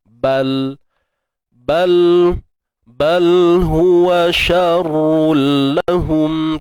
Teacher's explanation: Bal matikan lam macam biasa tanpa tawallud.